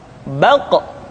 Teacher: Diucapkan dengan suara yang tebal dan dalam posisi sukun, maka terdengar pantulan suara.